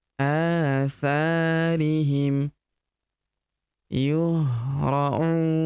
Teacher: Huruf U kita panjangkan 2, 4, atau 6 harokat ya. Karena di depan huruf U terdapat waw sukun sebelum huruf pemberhentian dan huruf pemberhentian huruf na kita sukunkan atau kita matikan.